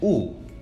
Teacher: they are both high vowels because the tongue is high in the mouth in the production of these two vowels